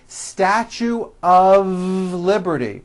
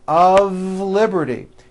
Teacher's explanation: notice how I connected the word of with the word Liberty of Liberty you see of is voiced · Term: of exception